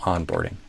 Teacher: So a like father and tongue tip at no no on on and then put the stress on the on not on the board.